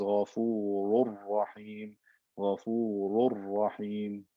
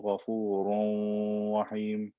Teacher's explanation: The noon is completely gone.